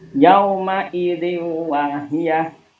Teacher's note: Yauma idzi wahiyah termasuk bacaan idgham bi gunnah. Alasannya ada kasrah tanwin ketemu dengan huruf wawu. Cara bacanya masuk dengan dengung 3 harokat.